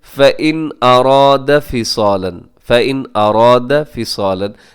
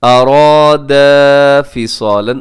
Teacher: الف مدہ ہے تو اسے 1 سیکنڈ تو لمبا کرنا ہوتا ہے